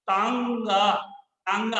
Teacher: जब हवा नाक और मुंह दोनों से निकले तो वो चंद्र बिंदु लगाया जाता है उसके लिए। इसे ही अनुनासिक कहा जाता है।